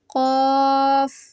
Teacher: जुबान की जड़ को तालू पर लगाकर मोटी आवाज में पढ़ें